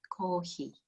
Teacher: So it's still coffee, but we've kind of softened the F into an H.